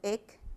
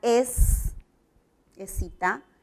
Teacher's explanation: La misma cantidad de fonemas y notamos que excita, aquí, ec, cuando digo ec, estoy articulando el sonido K, y acá es, excita, estoy con la S, con el fonema fricativo alveolar sordo